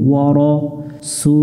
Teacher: আবদুহু আবদুহু। ওয়া র, র অক্ষরটাতে জবর আকার পড়া যাবে না, অর্থাৎ রা পড়া যাবে না, শাপলা ফুল দেখে এটা আমরা মোটা করে নিব।